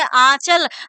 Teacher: नाक से भी हवा बाहर निकली और हमारे मुख से भी हमारा वर्ण और निकल रहा है। नाक से भी हवा निकली और इसके साथ साथ हमारे मुख से जो वर्ण निकल रहा है उसके साथ साथ हवा भी निकल रही है। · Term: अनुनासिक